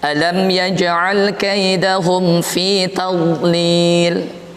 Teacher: Dhad tidak ada qalqalah, yang ada dia rakhawah istitalah. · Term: huruf dhad